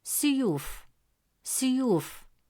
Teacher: the dhamma vowel is extended with the long vowel waw, producing a u sound